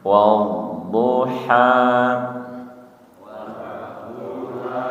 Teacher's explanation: Kemudian ha tenggorokan tengah. H-nya panjang dua harakat nih, tidak terlalu panjang tidak dibaca wadduha.